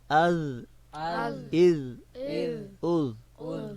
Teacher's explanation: नोक को ज़ुबान की नोक को सनाउलिया के किनारों से मिलाना है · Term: ज़ाल